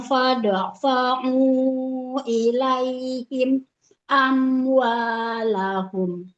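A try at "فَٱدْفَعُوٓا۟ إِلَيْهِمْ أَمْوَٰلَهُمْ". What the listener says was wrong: Nah, jangan dijedah. Jangan ilaihim. amwalahum. Kalau nggak kuat, sampai sekuatnya nafas. Tapi jangan dijeda. Kalau mau wakaf, maka sempurnakan wakafnya ya.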